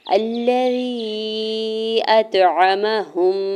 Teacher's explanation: اطعمہم، حمزہ کے زبر کو تو ساکن کے ساتھ ملاتے ہوئے تو ساکن پہ کلکلا کریں گے، یعنی تو کو تھوڑا سا ہلا کے پڑھیں گے ، عین کے زبر کو میم کے زبر کو بغیر کھینچے · ہا کی پیش کو میم مشدد کے ساتھ ملاتے ہوئے غنہ کریں گے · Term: ادغام شفوی